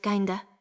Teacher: Kind of said fast, the D and of melt together, the F almost disappears